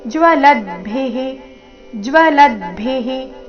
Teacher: ಕೊನೆಗೆ ರಸ್ವಭಿ ಮಹಾಪ್ರಾಣ ಅದರ ನಂತರ ವಿಸರ್ಗದ ಉಚ್ಚಾರಣೆಹಿ